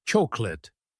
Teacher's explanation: Most people try to pronounce every letter clearly, but we actually say chocolate. The middle part gets reduced and the whole word flows as one sound.